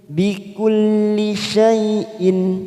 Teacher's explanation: Nallaha bikulli syai'in, bikulli syai'in, ada hamzah kasr tanwin bertemu ain, kita baca jelas tanpa mendengung, namanya idhar halqi